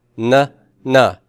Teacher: it's actually right at the top back of the front row of teeth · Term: nasal dental